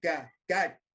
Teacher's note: Now the ka is not phonated. It is just that it is touched and gone.